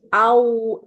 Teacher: Aunya kurang mencucu, Bu. Biar nggak miring.